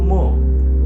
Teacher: नाकपुडीवर बोट ठेवून म्हणायचं म आपल्याला कंपन जाणवतात